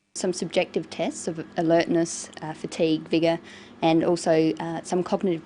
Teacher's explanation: she uses rising and falling tones and a tone that's neither rising nor falling just a flat tone